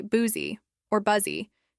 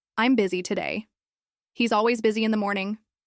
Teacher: the correct pronunciation is biz. The u is actually pronounced like a short I sound.